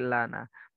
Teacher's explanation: yang nempel lam itu yang nempel bukan eh apa punggung lidah yang nempel adalah tepi ujung lidah itu biar enggak terlalu tebal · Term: tipis